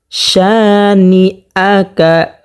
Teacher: শা এখানে একালিফ পরিমাণ টানিয়ে পড়তে হবে। জবরের বাম পাশে খালি আলিফ হওয়ার কারণে একালিফ পরিমাণ টানিয়ে পড়তে হবে, যেমন ইন্না শানিআকা হুয়াল আবতার।